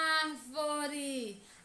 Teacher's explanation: A sílaba ar é a mais intensa, é a que demora mais a ser pronunciada.